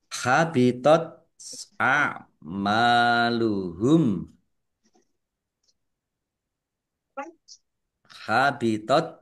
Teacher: tak sukun ini keluar S sedikit. Kemudian ain a'maluhum mim fathah alif mat tobi'i panjang 2 harokat.